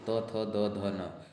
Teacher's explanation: त वर्ग के जितने हैं सारे दंत के हैं